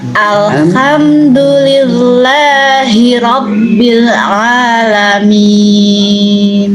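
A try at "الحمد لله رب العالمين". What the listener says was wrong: Ro-nya bergerak lagi. Silakan diulang. Dijaga ro-nya, dijaga ro-nya. Alhamdulillahi rabbil. Coba diulang.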